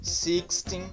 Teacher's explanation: A sílaba tônica do 13 até o 19, aliás, é o teen, que é a última sílaba.